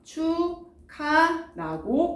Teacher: 축하는 자음, 기역과 그 다음에 히읗이 만나서 뭐가 됩니까? 기역과 히읗이 만나 뭐가 돼요? 맞아요. 키읔이 되죠. 그래서 축하라고 발음이 됩니다. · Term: 거센소리